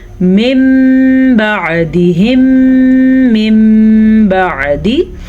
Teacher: نون ساکن کے بعد حرف با آ گیا ہے تو نون ساکن کو ہم میم میں بدل دیں گے، میم میں ہی بدل کے پڑھیں گے. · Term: اقلاب